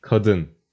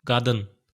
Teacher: K sound became voiced to G in Azerbaijani.